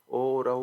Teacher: ओ और औ को कंठोष्टे कहते हैं, ये कंठ और ओष्ठ की सहायता से बोले जाते हैं।